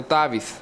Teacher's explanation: with a little TH sound in the end, like a little snake